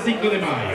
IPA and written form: ˈsiŋko ðe ˈmaʝo (Cinco de Mayo)